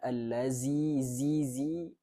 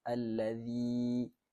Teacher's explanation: makhraj huruf zal ni kita kena letakkan lidah kita hujung lidah kita ni di gigi depan atas